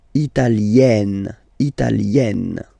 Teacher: when you get this E followed by a double consonant like here, then you will have to open it.